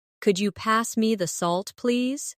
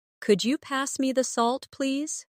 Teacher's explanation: my voice rises on could you and falls gently at the end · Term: intonation